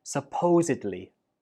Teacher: The stress goes on the second syllable, supposedly, and at the end, we do not pronounce it like bli. Instead, it is dli.